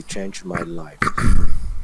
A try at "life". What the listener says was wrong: Life, not lifed.